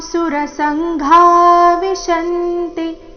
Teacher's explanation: ಸುರಸಂಘ ಘ ಮಹಾಪ್ರಾಣ ದೀರ್ಘ